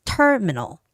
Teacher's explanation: So terminal, make sure that you keep the first syllable stress.